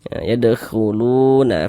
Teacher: Di sini ada waw sukun, sebelum waw sukun sebelah sininya ada harokat dhammah, ada tanda baca dhammah. Maka huruf yang memiliki harokat dhammahnya dibaca panjang, sehingga lu dibaca panjang. Mad tabi'i panjang 2 harokat sesuai dengan rumus 2 warna hitam itu.